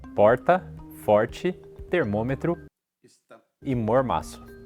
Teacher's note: a língua não chega a encostar no céu da boca. Ela precisa ficar em um formato meio enrolado para trás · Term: aproximante e retroflexo